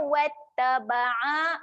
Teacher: Ain jaga makhraj huruf ain. Tekan di tengah kerongkong.